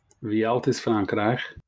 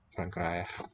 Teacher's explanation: Can't really tell if it's the monophthong a or if there's a slight hint of a y.